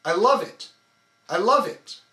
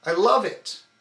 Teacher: you'll notice that I'm not contracting my core muscles on I or it only on love